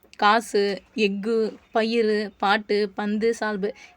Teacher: வார்த்தையோட கடைசிக்கு வரும்போது அரை மாத்திரை அளவுக்கு குறையும் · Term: குற்றியல் உகரம்